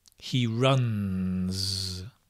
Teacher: it's a z sound because it's voiced